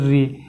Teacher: उच्चारित होता है दंत से कोई नहीं होता मुर्धा से ऋ ये ऋ आपका मुर्धा से यानी यह जो मुर्धा है यहां से ऋ उच्चारित होगा